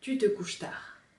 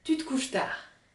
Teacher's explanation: Tu te couches tard, 3 syllabes. Le T de te est collé au U de tu.